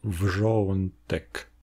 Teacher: la voyelle semble être souvent prononcée de façon non nasale au début, avant de se nasaliser subtilement, un peu avant la transition consonantique, comme dans le mot "wrzątek", qui, si j'exagère, se prononce wrzo -ɔ̃ n tek. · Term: assimilation de nasalité